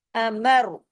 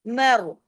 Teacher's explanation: मर, मीम रा जबर मर, इसमें तमाम बारीक हुरूफ है लेकिन रा हैवी करेंगे जबर के असर की वजह से